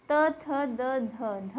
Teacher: द बोलते हुए हमारी जीवा जो है हमारी ऊपरी दांतों को टच कर रही है